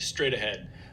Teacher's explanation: this T at the end of straight it becomes a little bit of a flap · in between two vowels H often becomes voiced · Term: voiced fricative